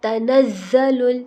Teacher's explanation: زا سیٹی والا حرف ہے اور زا کو ہم جما کے پڑھتے ہیں